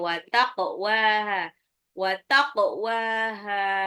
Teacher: qafnya harus dipantul karena dia adalah qalqalah ya